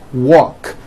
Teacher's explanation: The word walk, which has an unvoiced K sound at the end, walk, becomes walked.